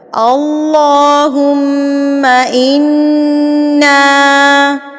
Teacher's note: کھڑی زبر کو نا ہم نے ایک حرکت کے برابر لمبا کرنا ہے